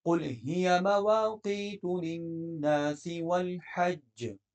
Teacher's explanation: للناس کی نون مشدد پر آپ غنہ کریں گے، والحج کی جیم پر قلقلہ ہوگا تو ج کی آواز آئے گی